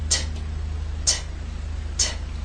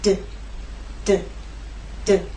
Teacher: These 2 consonant sounds are made basically the same way, but T is quiet, it's unvoiced, and D is voiced. So you'll feel no vibrations when you make the true T sound, t, t, t. And you will feel vibration when you make the D sound, d, d, d.